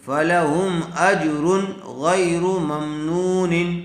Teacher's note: تنوین کے بعد حروف حلقی میں سے غین آیا ہوا ہے، اس لیے بغیر گننے کے جلد اظہار کر کے پڑھیں گے